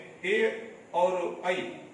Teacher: ये दोनों जो दीर्घ स्वर होता है, उन दोनों दीर्घ स्वर वर्ण का उच्चारण स्थान कंठ तालु होता है।